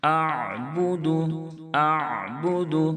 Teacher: حمزہ اور عین میں فرق ہونا چاہیے، اس کا لحاظ رکھیں۔ اعبد اعبد، بعض مرتبہ لوگ عین ساکن پڑھتے ہوئے جھٹکے سے آواز کو روک دیتے ہیں، جس کی وجہ سے عین حمزہ سے بدل جاتا ہے۔